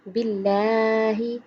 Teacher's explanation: لفظ اللہ سے پہلے حرف کے نیچے زیر ہے، اس لیے اللہ کا لام باریک پڑھیں گے